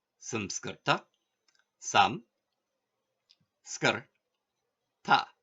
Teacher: the Anasvara and Visarga are in the same syllable as the vowel they follow